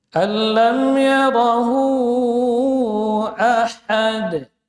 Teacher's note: Ha keluar dari tengah tenggorokan. · asalnya dua harakat tapi karena ketemu dengan hamzah maka dia dibaca Boleh sampai lima harakat, minimal dua. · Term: madilah tawilah